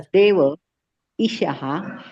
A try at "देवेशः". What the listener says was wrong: काही इ मोठा आहे की नाही म्हणून ईशहा म्हणायच